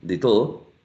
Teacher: i use a primary stress or lexical stress to show that is the first syllable in little and not the second one